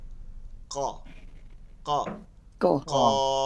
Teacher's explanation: তালু থেকে হলকের শেষ থেকে ক শুরু করে তালুতে বাড়ি দিয়ে উচ্চারণ করতে হবে, এটার মধ্যে একটা ভারী উচ্চারণ থাকবে